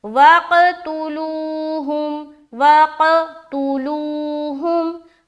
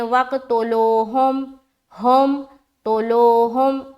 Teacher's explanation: कलकला भी हुआ, ता को भी अदा किया, वो भी मारूफ, तोलो नहीं बोलना